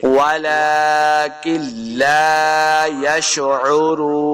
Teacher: آخر میں آیت ختم ہو رہی ہے، وقف کریں گے، نون کو ساکن کرنا ہے. واو مدہ ہے رون، 2 حرکات اس کو لمبا کریں گے.